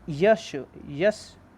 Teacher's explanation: ये सब किससे बोले जाते हैं, तालू से बोले जाते हैं। और ये सब किस में आते हैं, चा वर्ग में आते हैं।